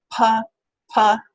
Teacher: it p p with your hand in front of your mouth you can feel that little puff of air · there's a little bit of air pressure building up and when that's released then the air goes rushing out and escapes and you get that sort of puff of air · the sound is made with the lips right and this happens to be a voice less sound so the vocal folds are not vibrating · this happens to be a voiceless sound, so the vocal folds are not vibrating. And what happens is at a certain point we got that closure. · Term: aspiration